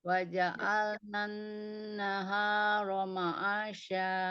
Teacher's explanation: naharonya jangan ada jeda seperti ada hamzah